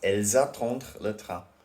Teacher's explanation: The reason why the S is pronounced is because attendre starts with a vowel, so we do la liaison.